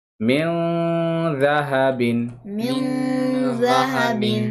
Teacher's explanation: اخفا کر کے پڑھنا ہے نا نون کی آواز کو ناک میں لے جا کر